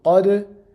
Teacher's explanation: We are doing a qalqala on dal because it is one of the 5 letters that we do a qalqala on.